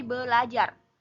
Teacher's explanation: bunyi R pertama disimilasikan dengan bunyi L sehingga menjadi belajar